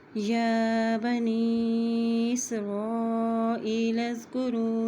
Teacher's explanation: حمزہ زے یا ای، لام زبر زال لز، لام کو زال کے ساتھ ملائیں گے کیونکہ زال کے اوپر جزم ہے